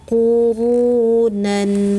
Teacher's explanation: Ru itu tebal, takhim, oke. Angkat seluruh lidah.